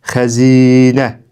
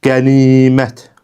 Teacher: i saiti uzun tələffüz olundu. Daha sonra qənimət sözü qənimət formasında, yəni i saiti uzun tələffüz olundu. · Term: səs uzanması